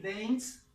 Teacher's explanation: como se pronuncia como si fuera una t acá al final